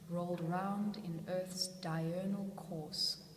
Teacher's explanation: that rolling R sound, that alliteration, I think that really expresses the way that she is being rolled round.